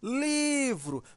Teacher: veja que o li né demora mais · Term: sílaba mais forte